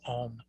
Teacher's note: In Tibetan, they've got a little subscript or superscript that kind of goes up above it for the O, and that gives it the sound of O. So it starts off with ah, then it gets the O, and then it has the suffix of the M, the ma sound. And so essentially we have these 3 things that are together in this one syllable Om.